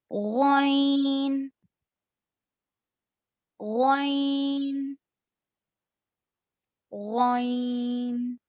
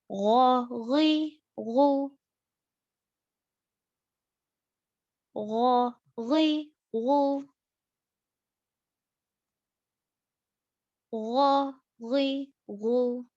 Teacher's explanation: और एक चीज ये याद रखने की है कि ये गैन और ख्वा है, इनको इनकी आवाज जो निकलती है थोड़ा मोटी होती है, यानी कि हेवी पढ़ेंगे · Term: अदनल हलक